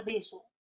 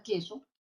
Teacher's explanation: Estas dos palabras son diferentes, son distintas, pero fíjate que comparten dos fonemas vocálicos, dos fonemas consonánticos en la misma posición, pero fíjate en la palabra beso, estoy usando la consonante B, la bilabial, y tengo en la palabra queso, la primera consonante, tengo la K, ¿no? Que es un fonema velar. Y fíjate, si yo cambio la B, lo cambio por la K y ya tengo otro significado, ¿no?